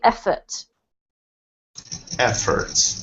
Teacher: uh yeah so efforts there is efforts has the the um emphasis on the first syllable